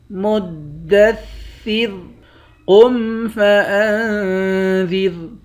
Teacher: قاف کو موٹا پڑھیں گے، نون پر اخفا کریں گے، آخر میں را ساکن ہے، اس را کو بھی باریک پڑھیں گے